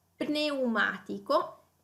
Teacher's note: quindi il suono pn, quindi pronunciato come due suoni, come due consonanti distinte, anche qui contrariamente all'inglese che invece pronuncia solamente la N.